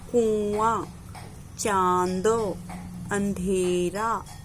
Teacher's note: और जिह्वा क्या होता है, वो जिस प्रकार से हम अनुस्वार का प्रयोग कर रहे थे तो जिह्वा क्या होती है कि हमारे तालु से टकरा रही थी, पर अनुनासिक का जब हम प्रयोग करेंगे तो जिह्वा तालु से नहीं टकराएगी, बल्कि हम खुला मुंह रखेंगे और ध्वनि मुंह और नाक दोनों के माध्यम से निकलेगी